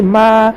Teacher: ہا حروف ہمس میں سے ہے، ہمس ہوگا رح. میم کے اوپر کھڑا زبر ہے، کھڑا زبر برابر ہے الف مدہ کے ایک الف کی مقدار کھینچ کر معروف پڑھیں گے